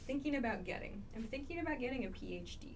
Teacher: thinking about getting this becomes very very short very reduced